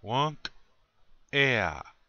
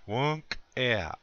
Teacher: So, you're putting a little space between the K and the E. You say the K sound, but you cut it off really short.